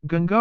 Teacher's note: कंठ से उच्चारित ध्वनियों से पहले न का उच्चारण भी कंठे ध्वनि की तरह होता है